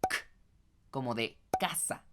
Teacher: en la primera consonante no siente ninguna vibración que provenga directamente de su garganta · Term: consonantes sordas